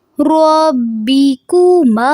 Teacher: جب ہم ما پڑھیں گے تو آواز ناک میں نہیں جانی چاہیے، اس کو منہ سے ادا کرنا ہے